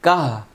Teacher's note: আমরা এখানে ওয়াকফ করব, গোলতা ওয়াকফ করলে হা হয়ে যাবে আর সাকিন হবে। তাহলে কাফ হা জবর কাহ, কাহ বলেন।